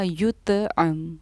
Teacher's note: क्योंकि तो हमारे हुरूफ़ क़लक़ला में से है, इसलिए हमने इसकी आवाज़ को लौटाया है। इसको हमने युत्अम नहीं पढ़ा, युत्अम।